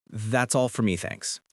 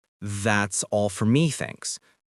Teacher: Practice saying it with the slight upward tone at the end. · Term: rising intonation